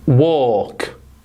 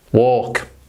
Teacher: We know it's a silent L, but look at the phonetic transcription. There is no L in this word, so don't pronounce it.